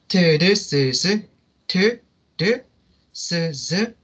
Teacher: alveolar 사운드는 이 혀랑 alveolar ridge를 이용해서 하는 소리인데